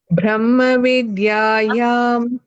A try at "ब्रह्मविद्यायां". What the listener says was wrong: Not bha. B. Brahma. Brahma. Brahma. Her sound has to come. Brahma.